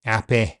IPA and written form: apɪ (happy)